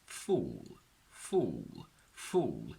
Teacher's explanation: We don't just say f, oo, l, but together it becomes fool, fool, fool, where the dark L basically sort of muffles the oo a little bit